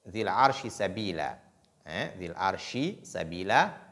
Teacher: Dhil arshi sabila, entre shin et sin, au niveau des points d'articulation, il y a une différence. La lettre shin, elle est prononcée au milieu de la langue et celle sin à l'extrémité de la langue. Donc, ce sont deux points d'articulation très différentes, et très différents du moins, et des traits distinctifs proches.